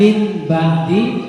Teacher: nun sukun atau tanwin bertemu ba dibaca dengung namanya iqlab